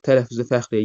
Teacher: tələffüzdə fəxriyyə, y-nın biri düşəcək